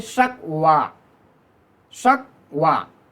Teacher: आखिर में या है लेकिन फिर भी जब इसका हम साउंड निकालेंगे तो हम कहेंगे शकवा, शकवा, यानी थोड़ा सा खींच के पढ़ते हैं, इसलिए इसको हम अलिफ मकसूरा यानी लिटिल मिनिएचर ऑफ अलिफ इंग्लिश ज़ुबान में कहते हैं, लिटिल मिनिएचर ऑफ अलिफ।